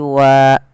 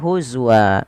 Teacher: Awalnya wan berubah menjadi wa. Apabila ada fathatain bertemu alif di akhir waqaf dan bacaan kita, dirubah menjadi panjang, menjadi wa. Huzwan berubah menjadi huzwa. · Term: mad iwad